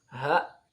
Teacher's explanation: ha ini ha tempatnya akan di tenggorokan. Pangkal tenggorokan.